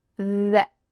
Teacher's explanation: It's a short E. Even though the word that has an A, that, often in fast English, it becomes the.